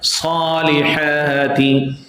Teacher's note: We'll stretch both places, Sad and Ha, equal to 2 counts, 2 haraka. Salihati. If you fail to stretch both places, Sa and Ha, then automatically you will start stretching the last word, last letter Tha.